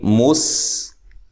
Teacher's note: سین کو باریک سیٹی سے ادا کرنا ہے